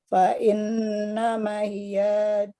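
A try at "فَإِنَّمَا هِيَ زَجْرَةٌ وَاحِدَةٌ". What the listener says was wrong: Fa'in maknya panjang.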